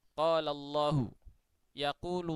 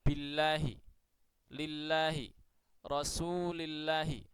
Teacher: lam Ini bisa juga dibaca tipis Kapan itu yakni ketika lafdzul jalalah didahului oleh huruf yang berharakat kasrah